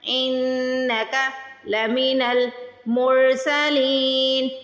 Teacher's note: نون پہ تشدید آ رہی ہے تو نون پہ غنہ کریں گے، ناک میں آواز لے کے جائیں گے